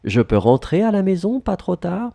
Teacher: Keep in mind, because we have the same order as for affirmation, we need to raise your voice, our voice in the end.